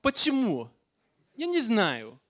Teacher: it starts high and it goes a little bit higher before it goes down.